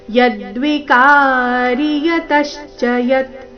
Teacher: ಯತಶ್ಚ ಶಬ್ದದಲ್ಲಿ ತ ಮೇಲೆ ಆಘಾತ